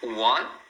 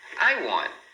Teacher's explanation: Então você vai ouvir pessoas falando want, soltando o T, mas muitas vezes você vai ouvir eles falando assim, ó, I want. Então ele coloca a língua lá onde faz o T, mas não deixa escapar o som